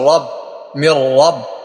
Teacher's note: রার উপর জবর আসছে, রা পুর করে পড়তে হবে।